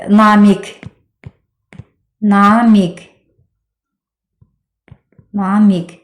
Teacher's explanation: Q-ğı əvəzləməsi baş vermirsə, artıq həmin sözün şəkilçisiz halı k kimi tələffüz olunacaq. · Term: k səsini